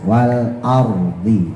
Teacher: Nah, wal ardi kemarin yang banyak kurang, roknya kan tebal tuh ya, rok sukun jatuh setelah fathah. Tapi jangan sampai a-nya itu kemudian ikut monyong ya.